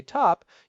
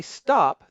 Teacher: If you hold your hand in front of your mouth when you say top, you will feel a little puff of air. We call that aspiration. But when you say stop, that puff of air is usually missing. Physically, those are two different sounds or two different phones.